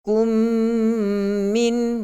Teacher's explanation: Dua harakat mad asli. Kum min, mim mati bertemu dengan min idgham mithlain, dengung dengan sifat ghunnah yang paling sempurna.